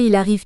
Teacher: illustre un enchaînement entre le L de il et le A de arrive